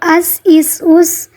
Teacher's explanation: سین سیٹی والے حروفوں میں سے اور باریک